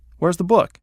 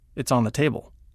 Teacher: The inflection goes up on the question and down on the statement.